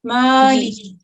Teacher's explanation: تھوڑا سا میم کو ذرا 2 سیکنڈ تک لمبا کریں گے